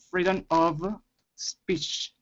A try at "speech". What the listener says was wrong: Yeah, and your CH at the end, really keep that in mind. That would be something for you to work on, that cha-cha, speech.